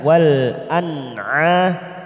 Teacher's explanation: nun sukun bertemu ain idhar halki kita baca jelas